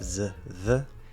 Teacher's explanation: So fully enunciated, you're going to slide from the Z into the TH, and you have to control that. So make sure you can do your endpoints, z, the, and then focus on the transition between them.